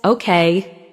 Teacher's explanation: When someone says, okay, with a falling tone, it usually means they agree or understand.